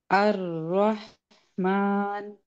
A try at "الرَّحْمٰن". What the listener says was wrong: نہیں، را کی زبر کے وقت ہونٹ کو سیدھا رکھتے ہوئے کھولے منہ کو.